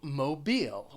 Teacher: mobile has two syllables the stress is on that second syllable